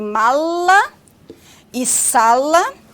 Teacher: realizada com a ponta a lâmina ou dorso da língua porém o ar passa pelas laterais da obstrução · Temos o lá, que é o consoante lateral alveolar, como em mala e sala.